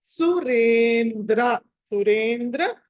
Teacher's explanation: రే తర్వాత అనుస్వారం వచ్చి ఆ తర్వాత ద వచ్చింది కాబట్టి దాన్ని న పలకాలి